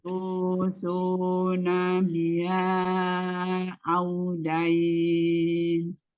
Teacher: Sempurnakan waw sukunnya, majukan kedua bibirnya.